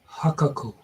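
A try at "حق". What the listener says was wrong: No, it's just a hard H, a haku.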